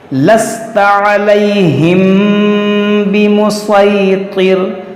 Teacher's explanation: میم ساکن کے بعد با, یہاں پر اخفا ہوگا, اخفاء شفوی یعنی غنہ کریں گے